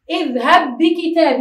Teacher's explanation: أيضا اذهب بكتابي، لا نقول اذهب بكتابي ولكن نقول اذهب بكتابي، تصبح باء مشددة واحدة